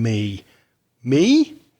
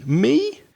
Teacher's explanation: notice the stress the energy that put on that pronoun me me with rising intonation